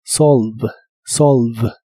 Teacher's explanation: La E del final no se pronuncia, así que esta palabra termina con el sonido de la V o V chica como la conozcas, la cual es labiodental y vibrante en inglés.